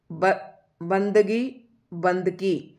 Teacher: गै की जगह क्या दे दिया इसने, कै दे दिया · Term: अघोषीकरण की प्रवृत्ति